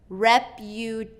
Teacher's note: So tay is going to get the stress, repyoo-tay-shun.